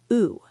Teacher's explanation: う oo, like flute. Your lips should be relaxed, not rounded like English oo.